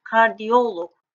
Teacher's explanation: Vurğu logdan bir heca önə düşəcək.